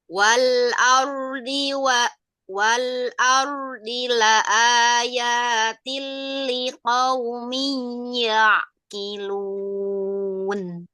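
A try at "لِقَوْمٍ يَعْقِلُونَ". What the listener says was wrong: Liqaumi ya'qilun. Idgham bi gunnahnya jangan terlalu cepat.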